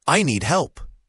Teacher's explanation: Here, the d at the end of need is often very light, almost swallowed, especially before another consonant like help. And help has a clear l sound, and then a p sound, closing your lips.